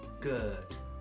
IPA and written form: ɡɜːd (Gird)